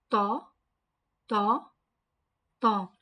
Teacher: Makhraj of Ta is touch the tip of the tongue to the root of the upper teeth.